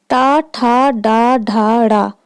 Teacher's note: बाकी ये जो 5 हैं ये मूर्धन्य या मूर्धा के अंतर्गत आएंगे। इनका उच्चारण स्थान मूर्धा है